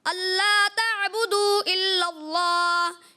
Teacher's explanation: मद्दे मुनफसिल अल्ला ताबुदू इल्लल्लाह, यहाँ पे कुछ मुझे महसूस हुआ कि मद को दराज कम किया इन्होंने